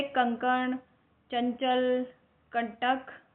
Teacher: इनके उच्चारण में नाक से अधिक हवा, सांस निकलती है। मुंह से कम। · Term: अनुस्वार